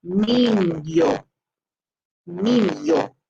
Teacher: this makes a combination of the N with a Y sound, like a Y